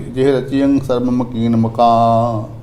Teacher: ਇਹ ਮਕਾਨ ਥੋੜਾ ਨਾਸਕੀ ਉਚਾਰਨ ਕਰਨ ਜੀ